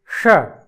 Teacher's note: जिसका उच्चारण हम मूर्धा से करते हैं इसलिए इसको मूर्धन्य षकार कहते हैं